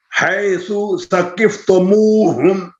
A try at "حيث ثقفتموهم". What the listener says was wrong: سا کے پیش کو لمبا نہیں کرنا حيث ثقفتموهم